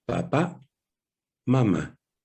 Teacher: Simultáneamente debuta el consonantismo con una oclusiva labial, P, y la nasal, M, que es la segunda.